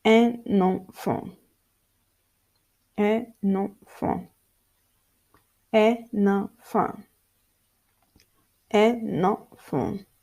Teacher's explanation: So the nasal is linked with the vowel A · link N in the nasal N when the next words start with a vowel or a silent H